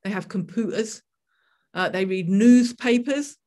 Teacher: the locals up here, their accent, there is no U sound at all